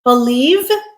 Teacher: Believe with a v voiced sound is our verb